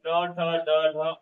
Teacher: जब हमारे जीभ छत के अगले भाग को तालु के छत के अगले भाग को स्पर्श करता है, तो वहां पे मूर्धन्य ध्वनि होता है